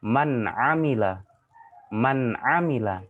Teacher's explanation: Man amila, nun matinya dibaca jelas. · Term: izhar